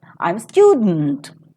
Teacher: we identify student as a nucleus and to this we give a falling tone · So, naturally, this itself becomes the nucleus. So, we identify student as the nucleus, and to this we give a falling tone because it comes into the very first rule of the falling tone, which is an ordinary sentence without any implications.